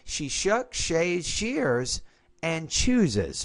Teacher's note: We basically have A, B, C, and D. So the tone here should be rise, rise, rise, and then fall.